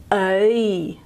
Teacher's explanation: the E vowel is coming from the centre of the vowel space, and it's actually got some movement in it.